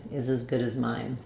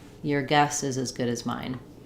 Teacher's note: mine is going to be stressed because it is a content word. It has some meaning here, and it comes at the end of the phrase.